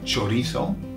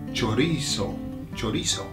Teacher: I'm saying chorizo because I'm making the Z into a th, okay? However, if you have the other kind of the ceseo, then you're gonna say chorizo, chorizo with an S, yeah, chorizo, okay?